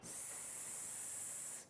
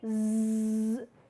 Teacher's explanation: It was the difference of being voiced and unvoiced sound.